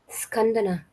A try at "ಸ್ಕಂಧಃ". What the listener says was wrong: ಸ್ಕಂಧ ಬರೆದ್ಬಿಟ್ಟು ವಿಸರ್ಗ ಹಾಕೊಳ್ಳಿ. ಸ್ಕಂಧಃ. ಧ ಮಹಾಪ್ರಾಣ.